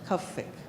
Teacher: it's a very um emphasized V sound that sounds almost like an F